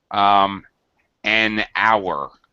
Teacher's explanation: hour, we don't pronounce the H, so it's an hour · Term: H is sometimes mute